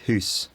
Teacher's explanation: saying it um maybe with a slightly more backed vowel so Scottish people often have a monophthong in this word like hoose